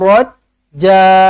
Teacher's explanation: pastikan berhenti pada ja ini dibaca dengan dua harakat